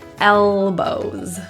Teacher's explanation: The L in elbows is difficult. Feel your tongue tip right to the roof. L, fully contacting.